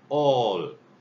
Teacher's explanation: 입모양은 아입니다. 입모양은 아를 하고요. 그리고 소리를 오를 내면 됩니다. 그러니까 정확하게 말을 한다면 아 한 상태에서 이렇게 해주는 겁니다.